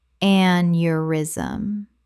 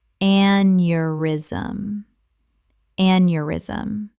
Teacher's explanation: Correct pronunciation, aneurysm. 3 syllables. The EU makes a y sound.